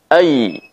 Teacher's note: tengah lidah dengan langit-langit yang berada diatasnya saat kita ucapkan hai hanya bagian tengah lidah menekan ke atas dan tidak menempel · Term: huruf ya